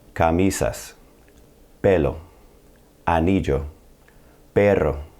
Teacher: The first category are words ending in a vowel or the letters N or S. The stress in these words will be on the next to last syllable. Not the last one, the next to last syllable.